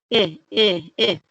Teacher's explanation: That middle letter is not an A anymore, so the sound isn't going to say ah anymore. It's going to say eh. Remember, make the smile.